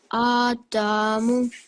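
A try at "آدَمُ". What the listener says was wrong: Okay, so your dal is slightly long, and it shouldn't be because remember the dal sound, it has a fatha, so 1 second. So it should be Adamu.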